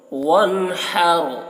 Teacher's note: لِرَبِّكَ وَانْحَرْ، نون میں اظہار ہوگا، نون کو جلدی پڑھیں گے۔ وَانْحَرْ، ہا کو حلق سے ادا کریں گے، رو کو پور پڑھیں گے